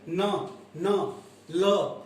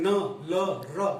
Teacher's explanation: जिह्वा ऊपरी दांतों के मसूलों को स्पर्श करती है।